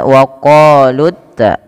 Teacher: tidak boleh dipanjangkan lut ta, tapi langsung saja karena di sini wawnya dianggap tidak ada. Alif yang di atasnya tanda sifar mustadir juga dianggap tidak dibaca, sehingga langsung kepada ini.